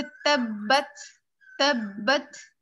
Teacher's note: ता में हम्स यानी हवा सी निकल रही होती है, तब्बत नहीं होता है वो, बिल्कुल एकदम से स्ट्रॉन्ग सा ता नहीं बनता है वो।